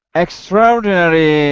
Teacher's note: we just say extraordinary as though the a weren't there